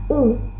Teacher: Ketiga, ada U, dibentuk dengan lidah yang berada di posisi tinggi dan belakang, serta bibir yang membulat